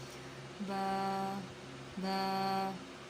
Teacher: با بند ہونٹوں کے گیلے حصے سے ادا ہوتا ہے۔ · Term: مخرج